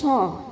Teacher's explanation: Sofir itu adalah seperti bunyi siulan. Yang mempunyai sifat sofir itu ada 3, yaitu sin, sod, sama za.